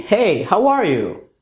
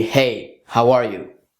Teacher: The other type is when the up talk happens at the very end of a sentence, just the intonation part. So it's neutral, neutral, neutral, and then hop, up talk.